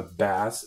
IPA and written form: bæs (bass)